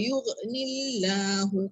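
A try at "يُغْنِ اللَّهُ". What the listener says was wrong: Ghain dia tak melantun.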